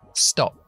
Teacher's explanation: recuerda que la p es sorda stop nada de voz